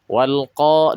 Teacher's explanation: huruf istila yang berharakat fathah tanpa disertai Alif berarti tingkatan kedua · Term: tafkim